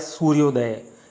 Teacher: तो अ और उ ये दो स्वर्ण स्वर आपस में जब मिले, आपस में पास में आ गए तो इनकी ध्वनि के उच्चारण में परिवर्तन हो गया, यानी अ और उ का उच्चारण हो गया ओ